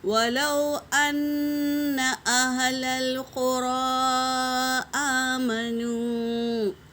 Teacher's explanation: غنہ کریں گے میری بہنوں، اور مد منفصل ایسے 3 سے 4 الف کے مقدار کھینچیں گے